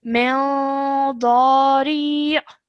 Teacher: produce a nasal sound which we hold for two seconds